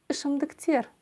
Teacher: И ударение здесь будет стоять на последнем слоге. Ышымдыктер, на слоге Е.